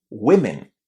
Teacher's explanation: On the other hand when we say two women or many women the vowel sound in the first syllable is a short i. This is one of the few cases in English where the letter O is pronounced as a short I.